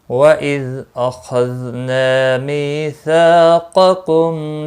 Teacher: ذال ساکن کو ہلانا نہیں، خا مستعلیہ ہے پر پڑھنا، ذال ساکن کو بھی ہلانا نہیں، نا الف مدہ ہے، ایک الف کے برابر کھینچ کر پڑھیں گے، می یا مدہ ہے اور سا الف مدہ ہے، دونوں کو ایک ایک الف کے برابر کھینچ کر پڑھیں گے۔